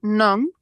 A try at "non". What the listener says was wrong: No, not none, not none.